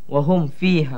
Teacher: cara bacaannya mim hendaklah dinyatakan dan tanpa dengung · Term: izhar syafawi